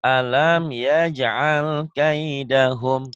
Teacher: alamnya itu idhar, hukum mimati. Jadi jangan ditahan.